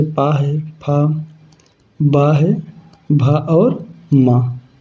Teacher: पा वर्ग में हमारा क्रमशः जैसे पा है, फा, बा है, भा और मा, ये समस्त ध्वनि हमारा इनका उच्चारण स्थान क्या है? ओष्ठ है।